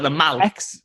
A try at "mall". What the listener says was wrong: The mal. The mall. This is the one time where like the sound kind of gets like an or sound. You're pronouncing bath as bath, but you're pronouncing mall as mal.